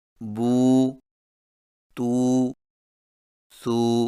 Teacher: واو مدہ میں ہونٹوں کو گول نا تمام ملا کر تھوڑا سا کھینچ کر پڑھیں